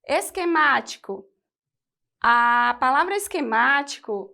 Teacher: o acento tônico recai na antepenúltima sílaba, portanto, é uma proparoxítona